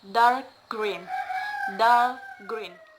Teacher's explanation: The stress is mostly placed on the second word. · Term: compound adjective